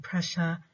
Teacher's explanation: the vocal folds don't vibrate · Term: voiceless sound